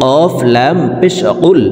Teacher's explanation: কফ হরফের উচ্চারণ জিব্বার গোড়া তার বরাবর উপরের তালুর সঙ্গে লাগাইয়া উচ্চারণ করতে হবে। তো এই পেশওয়ালা কফটি জজমওয়ালা লামকে একবার ধরবে।